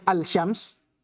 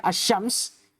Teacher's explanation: karena dia dibaca idgham tidak dibaca alsyams tapi dibaca assyams